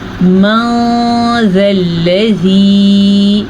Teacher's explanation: اب اسے ہم نے من ذا الذی نہیں پڑھا، نون کو چھپا کے پڑھا اور غنّے کے ساتھ پڑھا، من ذا الذی، زال زیر یا ذی، یہ یا مدہ ہے۔ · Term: اخفاء